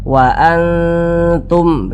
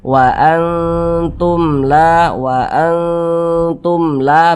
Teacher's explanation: kita tahan kita panjangkan sejenak karena dia didengungkan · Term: ghunah